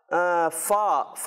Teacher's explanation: फ़ा का मखरज कहलाएगा ऊपर के दांतों के किनारे और नीचे के होंठ का तर वाला हिस्सा जो गीला हिस्सा होता है।